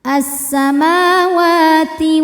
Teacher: karena wau berbaris fathah panjang maka wau ini panjang dua harakat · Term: mad thobi'i muqaddar